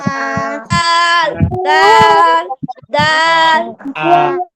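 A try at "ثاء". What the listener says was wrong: এটা দাল না, এটা হলো সা সা সা। দেখেন, এই যে বাংলায় যে ছয়াকারে সা না, এইরকম কাছাকাছির কাছাকাছির কাছাকাছি, মানে এটা একেবারে হুবহু তো হবে না, তবে একটা জিনিস যে আপনার নরম আওয়াজে উচ্চারণ করতে হবে, হালকা বাতাস বের করে জিহ্বার আগা উপরে 2 দাঁতের আগায় লাগিয়ে সা সা।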